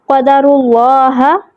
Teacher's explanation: را کے اوپر پیش ہے تو لام کا ہم پر پڑھیں گے۔